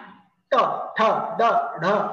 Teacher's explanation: पुढे येते टाळूचा मधला भाग कठीण भाग त्याला मूर्धा म्हटलं होतं तिथं मूर्ध्या जवळ हवा येते तिथं जीभ मागे वळते हवेला तिथं अडवते